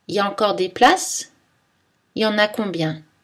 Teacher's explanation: dans la prononciation familière, on laisse tomber « il » dans l'expression « il y a ». On dit « y a ».